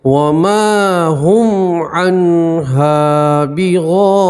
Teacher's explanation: مد متصل آپ 5 الف مد کریں گے، ٹھیک ہے، الف مدہ ہے، یہاں پر بھی الف مدہ ہے، اس لیے آپ ایک الف کے برابر کھینچ کر پڑھیں گے۔